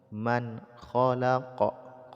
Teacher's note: mati ya ala Yamu Man khq nun sukun bertumbuhan Kha izhar jadi dibaca Nun sukunnya jelas tanpa dengung